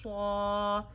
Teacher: یہ جو صاد ہے یہ ہمیشہ موٹا پڑھا جاتا ہے ، اسے موٹا ادا کریے اور الف پہ کوئی سائن نہ